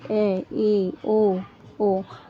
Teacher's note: Half open, यानी कि आपका जब मुंह आधा खुलता हुआ, ऐसे स्वर जिनके उच्चारण में आपका मुंह आधा खुले तो वो क्या होता है? वो हमारा अर्धविवर्त कहलाता है।